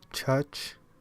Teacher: English has two affricates, both alveopalatal voiceless ch, the first and last sound of church